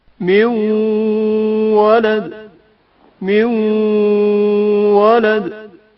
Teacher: واو میں نون ساکن کا ادغام جو غنہ کے ہمراہ ہے